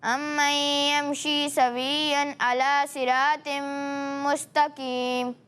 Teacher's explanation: ٹھیک ہے, اسی کے ساتھ یہاں صاد ہے حروف مستعلیہ میں سے ہے اور یہ قاف بھی حروف مستعلیہ میں سے ہے. دونوں کو آپ نے پر پڑھنا ہے, باریک نہیں پڑھنا